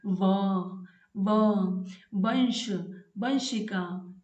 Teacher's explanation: इस एक वर्ण के लिए हमको अलग से एक सूत्र बनाना पड़ा, वकार से दंतोष्ठम। जब भी हम व का उच्चारण करते हैं, हमारे जो दांत हैं होठ से लग जाते हैं। · व, वंश, वंशिका, इस प्रकार से वकार से दंतोष्ठम। व का उच्चारण स्थान दांत और होठ दोनों होते हैं, दंतोष्ठ होते हैं।